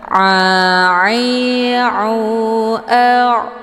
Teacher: ini letak posisinya di tenggorokan bagian tengah